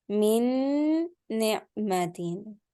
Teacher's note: I have stretched the noon sound with the meme.